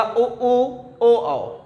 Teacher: जब आप इसका उच्चारण करते हैं तो जो ओष्ठ है आपका वो सर्कल बनता है, वृत्ताकार बनता है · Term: वृत्तमुखी